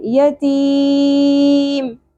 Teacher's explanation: وقف کی صورت میں ہم نے حرف مدہ کو 3 الف کے برابر کھینچا تو اس کو ہم مد عارض وقفی کہیں گے.